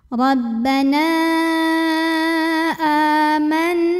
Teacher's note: nunnya didengungkan dulu ya, jadi bunyi en-nya tahan kurang lebih 2 harokat sampai ada getaran halus ke hidung. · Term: ghunnah musyaddadah